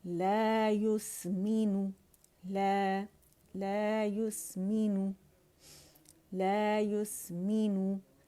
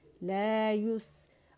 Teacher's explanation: لا جو ہے یہ 2 کاؤنٹ سے کھینچیں گے, لا یس, اور اس پہ نا یا پہ کمپلیٹ رولنگ کریں گے.